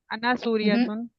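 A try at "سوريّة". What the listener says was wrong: ये जो सूरियतुन आप जिसको पढ़ रही है ना, इसकी यहाँ पे देखिए शद है। ठीक है, ये जो डब्ल्यू वाला साइन है इसको शद कहते हैं।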